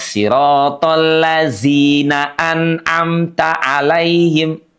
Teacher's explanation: Huruf dalnya dipastikan tidak berubah bunyinya menjadi zi.